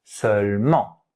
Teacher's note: That's a nasal sound, yeah? You remember, we saw it already. En. A bit of air has to get out of your nose. Seulement.